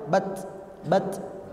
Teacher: Ta sukun itu tidak ada suara ke huruf S Pak